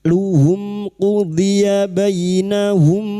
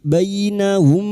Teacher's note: Luhum qudiya bainahum. Bainahum : sang fatha bertemu dengan seorang ya sukun. Kami melembutkan huruf lin.